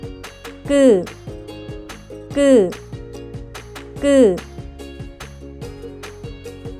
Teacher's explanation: When pronouncing, 끄, pronounce 그, while tensing your throat. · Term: tensed sounds